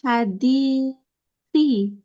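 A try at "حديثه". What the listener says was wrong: Habis fiil jangan dibaca kasroh. Ya, di suhu.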